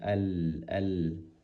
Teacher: Kalau lam itu bagian depan dari lidah atas ditempelkan ke langit-langit